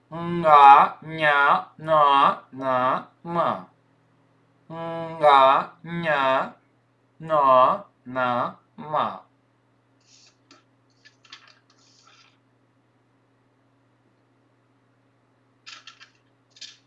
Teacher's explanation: Носовые. Носовые тоже звонкие.